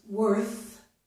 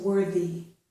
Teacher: This word is worth. The TH is the voiceless TH. But when I add a Y to this word, the TH changes and it becomes voiced. So this is worthy.